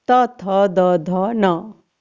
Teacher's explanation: इनका उच्चारण दांत से होता है, इसलिए इन्हें हम दंतय व्यंजन भी कह सकते हैं।